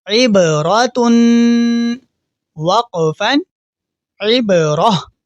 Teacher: را کے اوپر زبر ہے تو را کو ہم موٹا یعنی پر کر کے پڑھیں گے · اور آخری حرف وقف کرنے سے پہلے ہم تا پڑھیں گے اور وقف کرنے کے بعد ہم اس لفظ کو ہاں میں تبدیل کر دیں گے